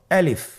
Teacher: আলিফ হরফটি মাখরাজ হলো আপনার মুখের শূন্যস্থান থেকে। গলা এবং মুখের শূন্যস্থান হতে আলিফ হরফটি উচ্চারিত হয়।